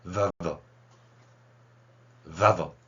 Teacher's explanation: 그래서 이런 거를 이제 언어학 쪽에서는 labiodental, labiodental이라고 발음하기도 하고요. labiodental fricative 그리고 voice 이렇게 됩니다